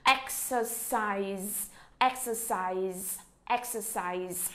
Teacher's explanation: Nhớ chỗ chữ size tận cùng, chúng ta phát ra âm Z giùm cô ha.